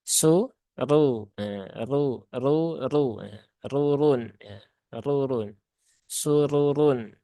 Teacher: Nah, jadi perlu diperhatikan bahwasanya ra yang berbaris fathah ya, dia dibaca dengan tebal ya.